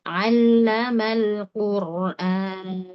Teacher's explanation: Perhatikan lam pertama lam kedua sama tipis.